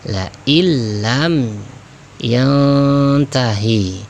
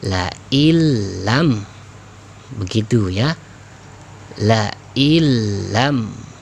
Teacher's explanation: Sama-sama dileburkan nun sukunnya ataupun tanwinnya. Tapi bedanya tidak didengungkan kalau idgham bila gunnah ini, ya, sehingga tidak berlama-lama dalam membacanya.